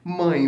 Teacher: não tenho mais oral e sim nasal porque tá saindo um pouquinho pelo nariz. Mãe, vai ser decrescente porque o A é mais forte que o E.